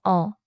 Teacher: for 어, relax the lips, no rounding.